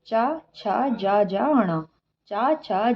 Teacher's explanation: जिसकी आवाज हमारे तालू से आती है उसे कहा जाता है च वर्ग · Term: तालव्य